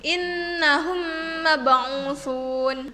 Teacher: Huruf mimnya itu seperti ditasydidkan.